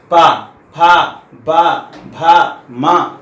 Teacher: प वर्ग में पा बोलेंगे तो होठ दोनों आपस में स्पर्श करते हैं, अगर ना करे दोनों टच ना होठ तो ये आप पा बोल ही नहीं पाएंगे। पा फा बा भा मा सब में जो है होठ स्पर्श करता है, अगर नहीं करेगा तो इनमें से कोई भी वर्ण, जितने भी ओष्ठ वर्ण हैं कोई भी उच्चारण स्थान नहीं होगा।